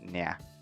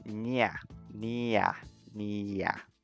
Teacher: the vowels at the end are always longer than English, so you just spend a tiny bit more time pronouncing those bits